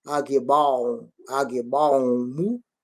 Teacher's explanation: Vamos abrir o O, que é de bola.